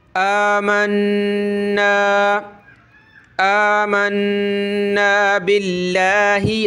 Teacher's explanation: ये हमज़ा खड़ा ज़बर आ खींचेंगे और नून पे हमने गुन्ना करना है। आमन्ना, आमन्ना बिल्लाहि, लफ्ज़ अल्लाह से पहले ज़ेर है तो लफ्ज़ अल्लाह को पतला करेंगे।